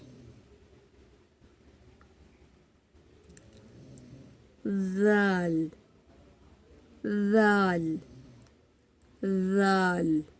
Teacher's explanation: जबान की नोक सनाया उलिया के सिरे को लगती है · زبان کی نوک ثنایا علیہ کے سرے کو لگتی ہے